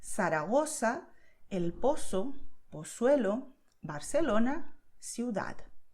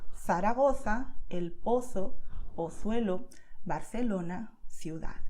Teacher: I make the sound of th, like when you say thing in English. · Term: Castilian Spanish